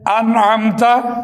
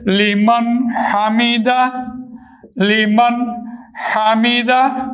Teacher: نون ساکن کی آواز کا اظہار ہوتا ہے، نون ساکن کی آواز ظاہر ہو جاتی ہے